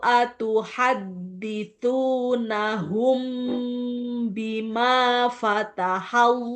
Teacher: Mim sukun bertemu huruf ba, ada dengungnya nih.